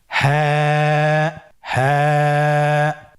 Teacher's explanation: হা হরফটি উচ্চারণের স্থান কন্ঠনালীর শুরু হতে অথবা আমরা যদি আরবিতে বলি হলকের শুরু হতে এটা এ হরফটি উচ্চারিত হয় কন্ঠনারীর শুরু থেকে